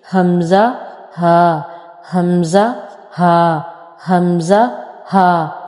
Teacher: हमज़ा हा का मखरज क्या है? बॉटम ऑफ द थ्रोट, यानी हल्क का सबसे नीचे वाला हिस्सा।